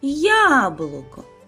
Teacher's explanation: Правильно, на перший склад я. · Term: наголос